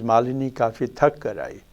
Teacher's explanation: To reproduce from the previous one, we notice that the IP level, the intonational phrase level, what we have is between the two phrases, it is the second phrase, which is also the final phrase, which has the strongest prominence, accent. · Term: international phrase level dominance